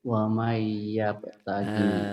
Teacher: Jadi nanti nun matinya berubah menjadi huruf yang di depannya. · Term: idgham biguna